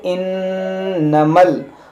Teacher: नून मुशद्दद है, इसमें गुन्ना करेंगे